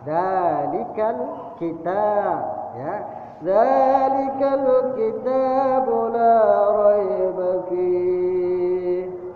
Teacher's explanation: dzalik, itu adalah mad asli atau mad tabi'i, panjangnya 2 harakat.